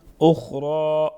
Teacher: خا اور را دونوں کو پر پڑھیں گے